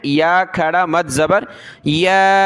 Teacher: یا کے اوپر یہ کھڑا زبر ہے اور مد ہے پلس میں، تو اس کو زیادہ کھینچنا ہے